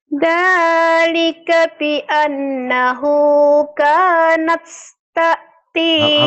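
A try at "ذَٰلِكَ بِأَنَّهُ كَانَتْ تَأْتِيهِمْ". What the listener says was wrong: Hamasnya hilang. Hamasnya hilang. Kanat.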